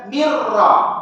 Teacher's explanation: Mir ni tak boleh dengung sebab nama dia bila gunnah. Dengan tidak dengung.